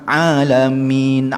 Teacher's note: Kalau kita tengok dari segi makhraj huruf ain ni duduknya di halqum tu ya.